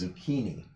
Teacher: the CH before an I or an E in Italian is a K sound.